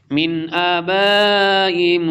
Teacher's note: جنات عدن التی وعدتہم ومن صلح من آبائہم اظہار اور نون ساکن کے بعد حروف حلقی میں سے حمزہ آ رہا ہے